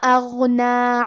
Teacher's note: کلمت اغنا میں حرف الغین کی ادائیگی حلق کے اوپر والے حصے سے ہے. کیونکہ غین حروف تفخیم میں سے ہے تو ہم یہ حرف کو بھاری آواز میں پڑھیں گے۔